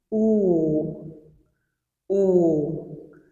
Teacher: Now, rounded vowels are those that our lips, they get rounded when we articulate them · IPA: /u/